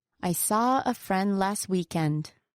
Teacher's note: Saw, friend, and weekend are the content words. Thus, hearing the sentence as a whole, those are the words that have the most audible stress.